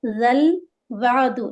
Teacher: اور زال فتحہ لام سکون، زال کو لام سے ملائیں گے، زال کو نرمی سے پڑھیں گے. زل وعد، لام کو بالکل یہاں پر ہلائیں گے نہیں، اس لیے کہ قلقلہ یہاں پر لام پر نہیں ہوتا ہے. واو فتحہ واو فتحہ عین سکون وا، دال دمہ دو.